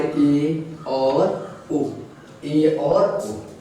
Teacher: जिन स्वरों के उच्चारण में मुख द्वार लगभग में आधा बंद रहता है उन्हें हम अर्धसंवृत स्वर बोलते हैं